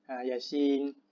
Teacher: Ya kita tak panjangkan, tapi kita panjangkan sebutan i pada Yasin. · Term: mad lazim harfi